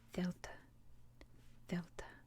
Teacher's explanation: it is kind of a th sound but mixed with like a v kind of